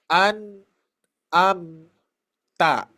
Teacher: dikarenakan masuk ke hidung ya ke rongga hidung maka itu termasuk guna